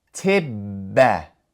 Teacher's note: So, if we were going to read this after writing out the sound of each letter and symbol, it would be pronounced tibba, emphasizing that double B sound, because that's what the shadda represents